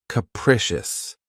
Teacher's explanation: the stress is on the second syllable keep in mind that the first syllable has that schah sound